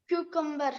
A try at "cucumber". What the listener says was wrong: क्यूकम्बर, आर को silent कर लो, दबा दो। क्यूकम्बर।